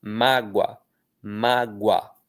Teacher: A é a vogal, O é a semivogal. Inclusive, esse O quase que vira um U, né?